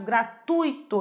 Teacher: Então a sílaba tônica aí é o ui, é o tui, né? E não só o i.